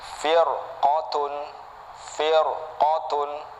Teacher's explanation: dibaca tebal ngikutin huruf istilahnya yang berharokat fathah atau dhummah